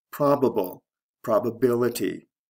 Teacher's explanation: Stress shift from the first to the third syllable.